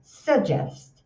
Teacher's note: É um s com schwa